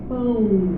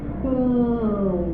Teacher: Isso aqui é um ditongo que vai da vogal para a semivogal. Semivogal é sempre som de I ou de U, ó, pão.